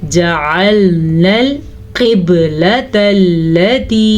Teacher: शहीदा, वमा जअलनल क़िबलतल्लती, वमा अलिफ मद्दा, जअलनल क़िबलतल्लती, क़ाफ को पुर पढ़ेंगे, बा पे कलकला करेंगे और क़िबलतल्लती इसमा या मद्दा को भी अदा करेंगे।